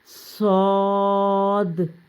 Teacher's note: زبان کی نوک نیچے والے دان کے کنارے اور اوپر والے دان کے کنارے سے لگے تو وہاں سے آپ کا ادا ہوگا صاد۔